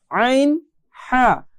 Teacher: এরপরে কণ্ঠনালীর মধ্য হতে এই দুইটি হরফ পড়তে হবে